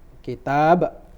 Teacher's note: kitab tadi kepanjangan, wa yu'allimuhumul kitab, kayak 4 harokat ya, padahal itu cuma 2 harokat ya